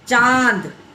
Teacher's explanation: शुरू तो नाक से होता है, खत्म आके मुंह पर होता है, चांद। तो इस तरीके से आपको क्या होगा, गूंगा, अंगूठा, पाँव, तो शुरू नाक से होता है, शुरू नाक से होता है और ख़त्म आता है मुंह के ऊपर। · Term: अनुनासिक